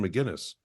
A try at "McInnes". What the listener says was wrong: Scottish. Everybody does the Irish pronunciation, McGuinness. Yeah, but it's McInnes. There's actually an invisible K in there somewhere. McInnes.